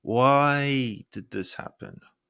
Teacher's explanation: Holding why to express frustration. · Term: held pitch